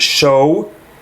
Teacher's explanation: Ashkenazim would add a w sound to it, show. Sephardim would not.